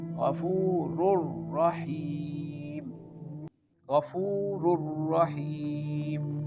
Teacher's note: So in idgham the noon does not remain separate.